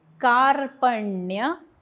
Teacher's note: का वरती आघात कारण पुढे जोडाक्षर, प वरती आघात कारण पुढे जोडाक्षर, का वरती आघात, प वरती आघात, दोषो पहतस, त वरती आघात कारण पुढे जोडाक्षर, स्वभाव कारण विसर्गाच्या पुढे प फ क ख आल्यास विसर्गाचा अर्धा उच्चार म्हणून 1/2.